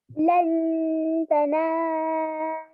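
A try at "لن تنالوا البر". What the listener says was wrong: तनालुल, ठीक है, आपने तनालुल को बहुत लंबा नहीं करना, तनालुल।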